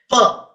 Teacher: per is also bilabial per is also a voiceless sound and per is also a plosive so three information i have simply for this sound per so · pa is not simply a sound, but pa is also bilabial. Pa is also a voiceless sound, and pa is also a plosive